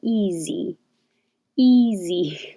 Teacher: that looks like an s but sounds like a z